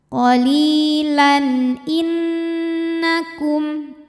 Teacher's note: Qalilan lan ada hukum izhar halqi karena tanwin fathah menghadapi huruf halqi atau huruf tenggorokan yaitu hamzah. Maka tanwin dibunyikan dengan jelas. Jadi bunyinya n.